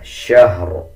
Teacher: اس میں آپ نے یہ خیال رکھنا ہے کہ شین کے بعد جو ہا ہے اس کو شین کے ساتھ ملا کے پڑھنا ہے. ہا کے اوپر زبر کی آواز نہیں نکالنی. اکثر لوگ اس کو شہر پڑھ دیتے ہیں.